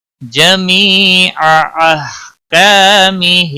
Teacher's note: جمی یا مدہ ہے، ایک الف کے برابر کھینچ کر پڑھیں گے، باقی کسی بھی حرکت والے حرف کو کھینچنا نہیں، ہا کو ہلانا نہیں۔